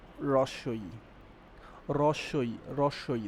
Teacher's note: হ্যাঁ, উপরে থাকে। রস্বই উচ্চারণ করার সময় জিভটা উপরে থাকে, রস্বই, এবং কি জিভটা সামনের দিকে এগিয়ে আসে। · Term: উচ্চ সম্মুখধ্বনি